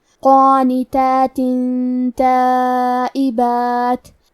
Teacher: تا حروف الاخفاء میں سے ہے تو ہم یہ حکم کو غنہ کے ساتھ ادا کریں گے